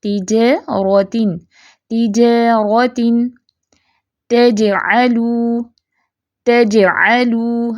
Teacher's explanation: اب دیکھیں جیم ساکن ہے تو آواز اچھلے گی، قلقلہ لازمی کرنا ہے آپ نے